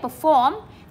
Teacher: Thì chúng ta nhấn trọng âm 2